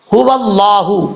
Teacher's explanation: واو کو واضح طور پہ پڑھنا ہے آپ نے، تاکہ واو اپنے مخرج سے جو ہے وہ ادا ہو سکے۔ هو اللہ، ہا جو ہے بھاری ساؤنڈ کے ساتھ پڑھا جائے گا، اس کا مخرج ہے حلق سے ادا ہوتا ہے، لیکن اس حلق سے ادا ہوتا ہے جو حلق سینے کی طرف ہے، اس لیے اس کو بھاری ساؤنڈ کے ساتھ پڑھا جاتا ہے۔